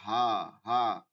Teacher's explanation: হালকা চাপ দিয়া হালকা আওয়াজ করতে হবে হা আর এটা হচ্ছে হলকের শুরু থেকে ভারী আওয়াজ করতে হবে গম্ভীর ভারী এবং গম্ভীর থাকবে